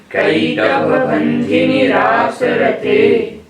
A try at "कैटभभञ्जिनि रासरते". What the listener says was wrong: कैटभ का में आई की मात्रा कई कहना है, कै नहीं कहना। अब भकारोत्तर अकार, भा के बाद जो छोटा है उसको कंठ से निकालना है।